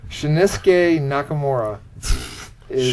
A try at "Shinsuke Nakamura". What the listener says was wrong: Shinsuke Nakamura. Shinsuke. Shinsuke. You said like Shunosuke or some. You put like 4 extra syllables in there. Shinsuke Nakamura.